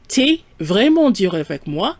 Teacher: So instead of saying tu es, we're running it together. T'es, T apostrophe es.